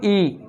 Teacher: ई को बोलेंगे ई, तो आप तालव्य का थोड़ा सहारा ले रहे हैं